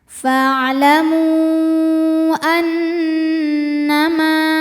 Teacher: Cara membacanya adalah berdengung, bunyi dengungannya tahan kurang lebih 2 harokat. · Hamzah a terdapat pada kata kedua yaitu annama. Maka mimnya dipanjangkan, boleh 4, boleh 5 harokat. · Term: gunnah musyaddadah, mad jaiz munfasil